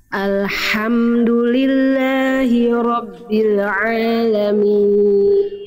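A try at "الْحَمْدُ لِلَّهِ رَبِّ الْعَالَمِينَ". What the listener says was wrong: Lam sukun jangan memantul Bunda. Bil.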